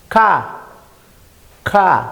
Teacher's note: dorso de la lengua con el velo del paladar Así que es un sonido velar